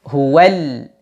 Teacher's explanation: lam takrif ketika bertemu dengan ha maka dia dijelaskan diizharkan hual Jelaskan lamnya hualal ya kemudian ha tipiskan ha ketemu dengan